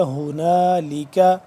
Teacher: الرحیم۔ ہنالک ہا پیش ہو، یہ ہے 2 آنکھوں والی ہا، اس کو پڑھتے ہیں دوسرے حلق کے آخری والے حصے سے ادا کرتے ہیں اس کو